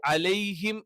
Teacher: അലൈ എന്ന് പറയുമ്പോൾ ലെ എന്നുള്ള ഉച്ചാരണം ഇത് അറബിയിൽ ഇല്ല